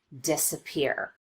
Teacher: an example of secondary stress would be the first syllable in this word disappear